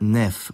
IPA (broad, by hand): nɛf